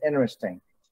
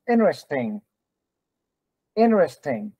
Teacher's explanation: When the T is preceded by N, sometimes you drop the T.